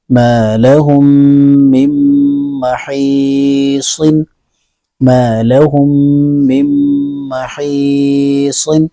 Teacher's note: نون کے اوپر جزم ہے اس نون کو نہیں پڑھیں گے بلکہ میم کی ہجے دوسری میم میں کریں گے